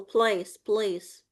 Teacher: Make it as much as you can dark L.